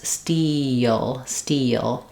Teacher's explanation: I want to keep the back of my tongue down. So because I'm moving from a front vowel E into a dark back vowel the dark L, we have a little bit of a y glide that happens in between. So you can think of it as steal, steal.